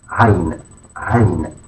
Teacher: a deep voiced sound produced from the throat